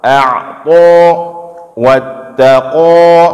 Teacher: vokal huruf tebal itu lebih dekat kepada o daripada kepada a